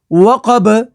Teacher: وقف تام کی وجہ سے با کو ساکن کر دیں گے. با حروف قلقلہ میں سے ہے تو یہاں پر قلقلہ ہوگا